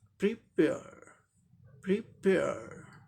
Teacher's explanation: ये vowel letter है लेकिन इसका साउंड नहीं होता है, इसीलिए ये आर का रॉ साउंड यहाँ ओमिटेड है ब्रिटिश इंग्लिश प्रोनाउंसिएशन में